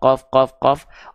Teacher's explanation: Pangkal lidah kita yang kita sentuhkan ke bagian langit-langit yang lunak saja. Jadi pangkal lidah kita nempel ke langit-langit lunak. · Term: aqsal lisan